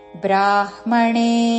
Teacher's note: బ్రా దీర్ఘము బ్రాహ్మ ముందు హ పలికి తర్వాత మ